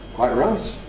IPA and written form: ˈkwaɪʔ ˈraɪt (Quite right)